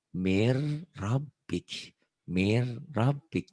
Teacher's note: B-nya kayak ditahan. Nyamber seperti ditahan sebentar.